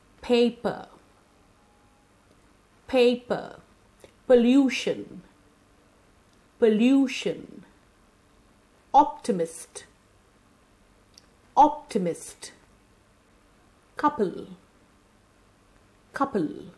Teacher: the per sound is a voiceless bilabial plosive it's a light sound in this sound we bring both the